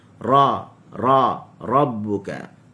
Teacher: Bila ra disebut dalam keadaan tebal, dia ada sedikit lekukan pada tengah lidah yang menghasilkan huruf tadi tebal. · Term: huruf ra